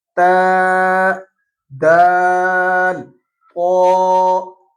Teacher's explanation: تا، دال اور طا کا تقریباً سیم مخرج ہے۔ زبان کی نوک سامنے والے اوپر والے دانتوں کی اوپر جڑ میں ہلکے سے ٹکراتی ہے تو یہ تا ادا ہوتی ہے، یہیں سے دال ادا ہوتی ہے، اور طا کو بھی تھوڑا پر کر کے اسی جگہ سے ادا کرتے ہیں۔ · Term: حروف نطعیہ